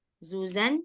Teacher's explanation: mengucapkan huruf zai, dia suara desisnya harus keras karena dia punya sifat sofir. Sofir itu maksudnya suara desisnya itu kuat.